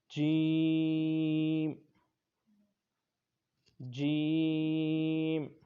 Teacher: حروف شجریہ ٹوٹل 3 ہیں، جن میں ایک حرف یہ بھی ہے، اور اس کی اردو بنتی ہے کہ زبان کے درمیان اور تالو کے درمیان سے ادا ہوتا ہے